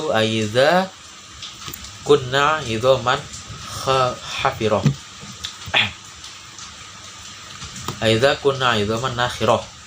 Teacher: nun bertanda tasdid dan cara membacanya dengung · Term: gunah